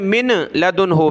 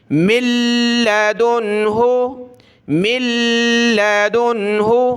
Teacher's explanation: نون ساکن کے بعد حروف یرملون میں سے یہ لام آ گیا تو ناک میں آواز پیدا نہیں ہوگی اور نون چھپ جائے گا, بالکل مدغم ہو جائے گا. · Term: نون مدغم